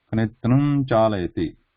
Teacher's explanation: We are not going to stop for the full ma with the full closure of the lips.